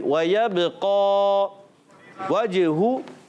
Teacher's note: جیم کی ادائیگی کریں گے کلیئر. جیم کی ادائیگی ہوتی ہے وسط زبان، وسط تالو، زبان کے درمیان اور تالو کے درمیان سے